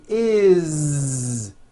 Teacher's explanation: It's always is with a voiced Z.